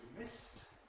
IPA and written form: mɪst (missed)